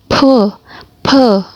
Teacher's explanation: Nah, kalau di Chinese itu seperti ada nafas yang keluar. Jadi ada udara yang keluar